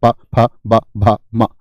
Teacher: और पै वर्ग आपका होठ से बोला जाता है।